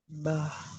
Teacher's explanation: Merapatkan kedua bibir tanpa disertai ghunah. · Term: huruf ba